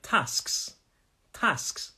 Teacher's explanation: some people in the north say tasks tasks so it's an ah